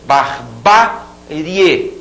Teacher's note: Barbarie, esse ba é tônico.